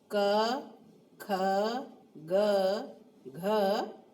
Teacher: ये कंठ से उच्चारित होते हैं, यानी एक ही स्थान है, वो स्थान कौन सा है, कंठ। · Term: कंठे ध्वनि